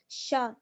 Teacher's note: शीन का मखरज आपको मालूम है जुबान का बीच ऊपर का तालु